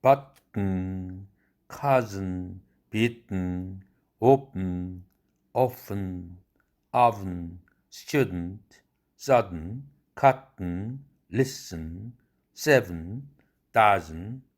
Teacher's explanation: 앞에 있는 자음 다음에 은 사운드가 오는데 앞에 있는 자음과 은 사운드의 울림도를 비교해 봤을 때 은 사운드가 더 크기 때문에 이 은 사운드가 성절 자음이라는 말로 불리는 것입니다